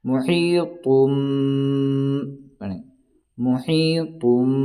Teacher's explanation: نون کو میم سے بدل کر کے پڑھیں گے